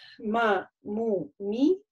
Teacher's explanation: да, то есть мы говорим на суккуне, губы легонько закрываются, при этом звук как бы перенаправляется на нос. Да, не говорим сильно губы, если сжимаете, звук изменяется, стает таким тяжелым, да. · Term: Буква мим